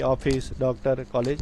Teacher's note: ये हिंदी के आ और ओ के बीच की ध्वनि है।